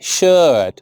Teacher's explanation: so in shirt again there is no R. There is an R, but we won't produce it.